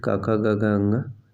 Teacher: क ख ग घ ङ यह जो है कंठ ध्वनि है